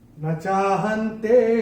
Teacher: अनुस्वार के बाद जब त आएगा तो अनुस्वार का उच्चारण होगा न।